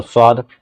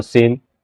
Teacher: موٹا پڑھیں گے تو صاد، اگر پتلا پڑھیں گے تو سین